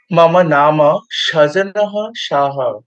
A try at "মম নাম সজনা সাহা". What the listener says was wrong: সাহা বলতে হবে ওখানে আর বিসর্গ লাগবে না কারণ আকার